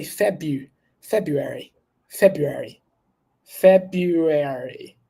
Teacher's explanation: we're not going to pronounce the first letter R